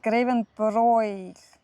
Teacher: Nein, hier haben wir es jetzt auch wieder mit einem Dehnungsvokal zu tun. Das I ist ein Dehnungs-I und deswegen wird das O davor lang ausgesprochen.